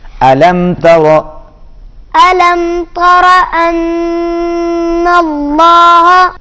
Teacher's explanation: میم پر آواز ناک میں نہیں جائے گی۔